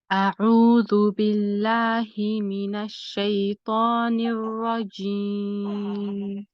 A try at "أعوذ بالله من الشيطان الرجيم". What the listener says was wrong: Your ra can be a little heavier, in the word ar-rajim. أعوذ بالله من الشيطان الرجيم. What I want you to do is when you are the joining ra, when you say mina shaytanil, this one, when you join it, this needs to be heavy too.